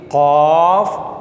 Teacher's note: जो मखरज नंबर 5 है वो ये है कि ज़ुबान की जड़ जब कव्वे के साथ नरम जिल्द के साथ लगता है, नरम तालू से लगता है, ज़ुबान की जड़ नरम तालू से लगती है तो लफ्ज़ क़ाफ़ अदा होता है।